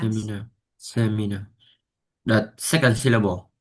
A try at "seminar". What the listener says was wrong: That is the first one. Se Listen, I don't say seminar. I say seminar. So the first one, okay? The first one,